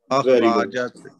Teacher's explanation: اس کے ساتھ ہی جو را ہے را موٹی پڑی جائے گی سر، کیونکہ اس کو اوپر اس کے زبر ہے